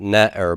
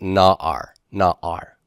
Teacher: this guttural in root 2 position will force A-class vowels both before and after the guttural. So that's why this is not ne'er but na'ar.